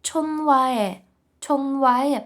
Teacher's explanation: бачите ми аж два рази проігнорували літеру х